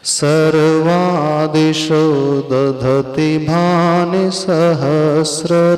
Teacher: रश्मि में श जो है तालव्य है। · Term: तालव्य श